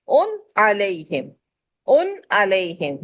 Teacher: ان علیہم، ان علیہم یعنی نون کو ظاہر کریں گے. جو غنے کا نون ہے اس کو کھینچنا نہیں ہے، غنہ نہیں کرنا ہے، بلکہ اس کو ظاہر کر کے پڑھ کے جلدی سے آگے چلے جائیں گے.